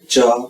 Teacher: cha sound is actually the combination of two symbols, ta and sha. If you combine both symbols, it produces cha sound. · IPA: tʃ